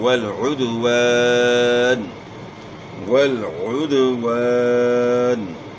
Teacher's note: उद्वान नहीं पढ़ना, आइन की आवाज़ गले के दरमियान से निकालनी है, वल उद्वान, और वाव की अदायगी में आपने नातमाम होंठ गोल करना है, यानी वाव की अदायगी में ऊपर वाले दांत आपने इस्तेमाल नहीं करने, वाव में दांत इस्तेमाल ही नहीं होते हैं।